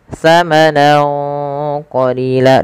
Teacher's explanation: Cara membacanya yaitu samarkan suara nunnya kepada huruf qaf awalnya samanan, karena bertemu qaf samanan qalila, dan ditahan dengungannya sepanjang 2 harokat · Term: ikhfa